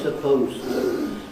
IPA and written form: səˋpəʊztə (supposed to)